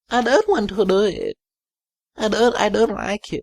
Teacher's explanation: the point where it goes lower, his voice starts to go creaky